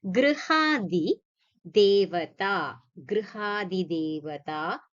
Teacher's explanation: So here be very careful, it is not gra, it's gr. Okay, that r sound has to come. So general tendency is to say gra, so it's not gra, it's gr.